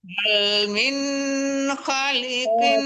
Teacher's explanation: Jadi min sama kin itu tidak ada dengung, tidak ada samaran ya, jangan tertahan.